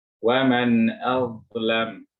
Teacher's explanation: dha juga ujung lisan menempel dengan ujung gigi seri atas, dibantu dengan mengangkat lisan bagian belakang untuk mendapatkan ketebalan.